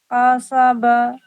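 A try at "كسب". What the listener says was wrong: کسب. قا نہیں، کا. کسب.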